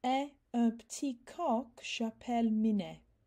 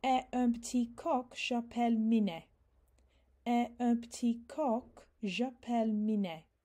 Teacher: you can hear where I've connected the que onto the end of the word co. So it's coq.